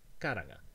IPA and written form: kaɾaŋa (karanga)